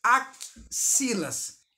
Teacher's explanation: Só que o som que eu produzo, percebam, axilas, eu conto um som a mais, que é o som do KC.